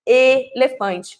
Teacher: quando eu tenho a palavra elefante, eu tenho o E mais fechadinho